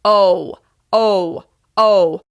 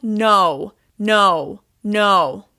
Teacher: we add the w sound to the end of the o sound